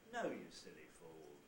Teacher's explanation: the nucleus itself starts high and pitch falls to low and then levels out so it goes no you fall and if we make the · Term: high fall